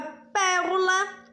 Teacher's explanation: como a palavra Pérola o pé mais forte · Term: sílaba tônica